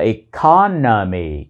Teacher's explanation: Economy cũng là một từ có bốn âm tiết, với trọng âm rơi vào âm tiết thứ hai.